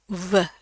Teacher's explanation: V, tapi dari pita suara, v. Jadi berasa tuh pita suaranya ngebunyi.